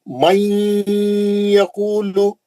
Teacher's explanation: नून के या में गया गुन्ना कर